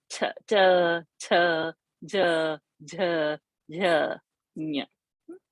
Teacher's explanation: Cha varga comes from the palate. Cha, cha, which soft palate. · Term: talavya